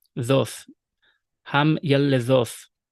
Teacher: the tav on the end, is going to be spirantized because it's following the open syllable, thoth, ham yaledhoth.